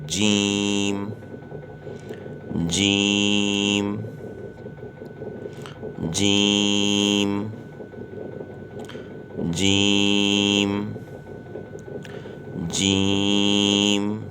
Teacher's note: زبان کے بیچ کا حصہ جب تالو کے بیچ کے حصے سے لگے گا تو یہ حرف پڑھا جائے گا